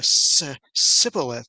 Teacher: the ephraimites could not make the sh sound and so what would come out would be a sibilith sound